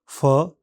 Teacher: फ इस ध्वनि के उच्चारण में भी होठों पर वायु प्रवाह रुकता है और होठ खुलते समय हवा अतिरिक्त जोर झोंके के साथ बाहर निकलती है। हिंदी के फ जैसा ही है यह।